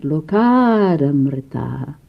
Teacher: Lokat, it was hard sound, non-voiced. It became voiced.